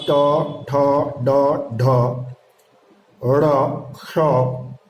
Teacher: टवर्ग, अर्थात ट, ठ, ड, ढ, ड़, क्ष का उच्चारण स्थान मूर्धा है।